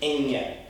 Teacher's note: Just think about N and then going ya at the end of it, but real quick.